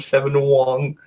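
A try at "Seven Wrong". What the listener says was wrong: Everyone forgets the R. I think you said Wong.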